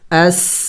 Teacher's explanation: آدمل حمزہ سین زبر اس سٹی کی آواز نکلنی چاہیے